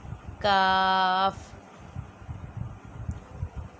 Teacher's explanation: یہ زبان کی جڑ اور تالو کے سخت حصے سے ادا ہوتا ہے۔